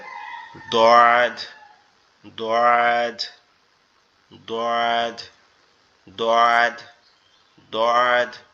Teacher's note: দোয়াতটা আমাদের জিহ্বার গোড়া, আমাদের জিহ্বার গোড়া উপরের মাড়ির দাঁতের সঙ্গে, ডান পাশের উপরের মাড়ির সঙ্গে লাগবে, লেগে উচ্চারিত হবে দোয়াদ, দোয়াদ, দোয়াদ, দোয়াদ, দোয়াদ